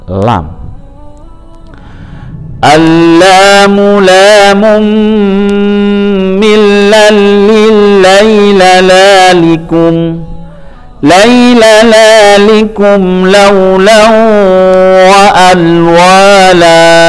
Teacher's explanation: makhraj huruf lam yaitu keluar dengan menggerakkan semua lidah dan ujung lidah bertemu dengan ujung langit-langit